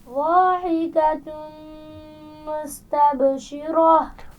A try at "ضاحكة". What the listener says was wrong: ضاد کے مخرج کا خیال رکھیے. ضاحکۃ.